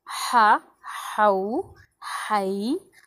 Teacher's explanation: हा हुरूफ हलक़ी है, वस्त हलक़ से निकलता है